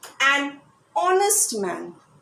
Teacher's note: h is not pronounced it is silent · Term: h is silent